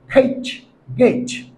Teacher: জিহ্বার গোড়া উপরের যে ভেলার আছে বা নরম অংশ আছে তালুর, সেই নরম অংশের সাথে স্পর্শ করে বলতে হবে